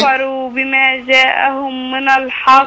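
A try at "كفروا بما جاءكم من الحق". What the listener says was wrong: لا بما جاءكم، مش جاءهم،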